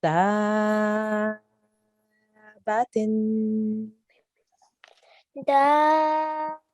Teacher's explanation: make sure you elongate at the end with the tanveen a little bit as well